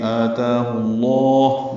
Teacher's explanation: ہا کو اقصی حلق سے ادا کرتے ہوئے لام اسم جلالہ سے ملائیں گے ، آتاہ اللہ، لام اسم جلالہ کو پر پڑھیں گے۔ لا